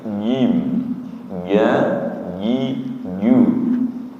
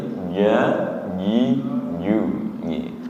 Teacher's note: Jim ketika sudah benar suaranya tidak berdesis.